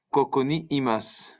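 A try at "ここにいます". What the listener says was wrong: Koko ni imasu. Very good. Perfect.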